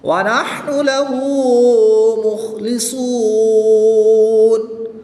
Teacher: خا اور صاد حروف مستعلیہ میں سے ہے تو ان کو پوری یعنی موٹا پڑھیں گے. وقف کی حالت میں یہاں پر مد عارض ہوگی، 2 سے 3 الف تک کھینچ کر پڑھیں گے.